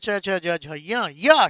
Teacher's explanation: ये जब बोलते हैं तो जीभ तालु को छूती है। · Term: चवर्ग